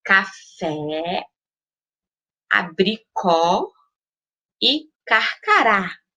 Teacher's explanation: No caso das vogais A, E, O, com acento agudo, a pronúncia deve ser aberta.